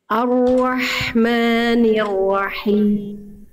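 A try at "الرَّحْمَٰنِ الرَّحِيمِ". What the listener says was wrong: Oke, huruf ro-nya jangan wa. Ar-Rahmanir-Rahim. Jangan Ar-Rahmanir-Rahim. Ar-Rahmanir-Rahim. Rahim. Rahim. Jadi huruf ro jangan sampai ro. Ar-Rahmanir-Rahim. Roh. Jangan roh. Jadi kayak ada hamzah, ada fathahnya. Ar-Rahmanir-Rahim.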